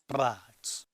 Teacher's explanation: If you are familiar with IPA, you know this is the bilabial trill /ʙ/